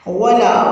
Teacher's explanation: واو پہ ہونٹوں کو راؤنڈ کرنا ہے، لا کی ہمیں 2 کاؤنٹس کرنی ہے